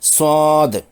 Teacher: صاد مفتوح یعنی زبر والا کے بعد الف سے الف مدہ ہے اور آخری دال ساکن جزم والی ہے۔ حرف مدہ کے بعد سکون یعنی جزم آنے سے مد لازم 6 حرکات کھینچ کر پڑھنا ہے۔ آخری حرف دال ساکن ہے جو کہ قطب جد کے حروف میں سے ایک ہے، چونکہ یہ ساکن ہے اس لیے اس پر قلقلہ ہوگا۔